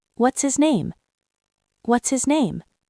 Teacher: This is a very common question, but we don't say what is his name. The H in his drops. What is connects to is what's and his becomes is. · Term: H dropping